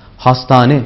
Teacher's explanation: Yani ortadaki H harfini düşürürüz, söylemeye gerek kalmaz. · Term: ünlü birleşmesi